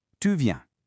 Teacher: So, take this super simple phrase, tu viens. If your voice falls at the end, it's a statement, you are coming. But if your voice rises at the end, those exact same words suddenly become a question, are you coming?